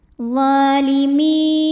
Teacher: maka mimnya dipanjangkan boleh 4, boleh 5 harokat. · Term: mad jaiz munfasil